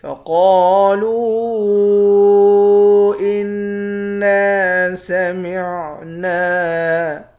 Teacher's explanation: فقالوا انا سمعنا، قاف کو موٹا پڑھیں گے، قاف موٹے حروف میں سے ہے۔ قاف کے بعد الف ہے، الف حروف مدہ ہے، ایک الف کے مقدار کھینچیں گے۔